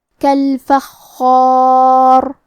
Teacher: مد الف اپنے پیچھے والے حرف کا حکم لیتا ہے تفخیم میں اور ترقیق میں، لہذا ہمیں خاء کو اور مد الف کو دونوں کو تفخیم سے پڑھنا ہے